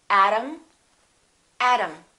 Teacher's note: T between two vowels sounds exactly like the D.